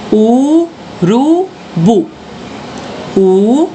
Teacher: logo identifiquei que o bu é o mais alto